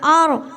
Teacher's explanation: رائے ساکینہ سے پہلے زبر ہے، رائے ساکینہ کو پور پڑھیں گے